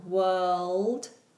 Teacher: World also has a dark L.